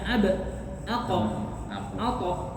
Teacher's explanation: qalqalah niku ee memang ada pantulannya